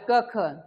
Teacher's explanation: अल्पप्राण क मध्ये ह मिसळलं की ख तयार होत ख हे महाप्राण आणि क हे अल्पप्राण आता तसं पाहायला गेलात